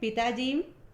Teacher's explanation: बलाघात कहते हैं जैसे पिताजी यहां पर ता पर बलाघात है जब हम पिताजी बोलते हैं इसमें ता पर जोर दिया जाता है